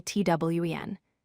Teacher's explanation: 20 has the stress on the first syllable TWEN.